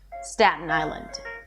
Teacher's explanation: Stress falls on island. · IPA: ˈstætən aɪlənd